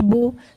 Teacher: سے بچنا ہے، تو پڑھنا ہے کیسے، معروف آواز سے، اور پیش کی آواز آگے کو جاتی ہے اور ہونٹ گول ہوتے ہیں